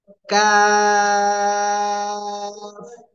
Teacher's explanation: 4 আলিফ টেনে পড়তে হবে। জিহ্বার গোড়া, গোড়া গোড়া থেকে একটু আগে বাড়াবো, বাড়িয়ে তারপর আবার উপরে তালুর সাথে লাগিয়ে চিকন আওয়াজে উচ্চারণ করবো